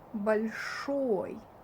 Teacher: it's pronounced like a, not большой, but большой, because it's not under emphasis